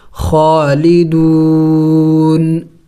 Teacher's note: وقف میں ہم نے اس نون کو سائلنٹ کرنا ہوگا یعنی ساکن کرنا ہوگا